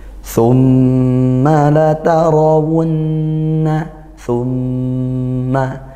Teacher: tumma dibaca dengung gunah m bertasydid